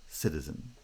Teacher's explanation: unstressed citizen citizen siddha there are two light syllables siddha siddha stress is on the first syllable because it's the strong syllable in the foot